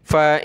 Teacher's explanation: अगली आयत का पहला लफ्ज़ ये देखें, नून के ऊपर जज़म, तो ये नून साकिन, नून साकिन पर नाक में आवाज़ पैदा होती है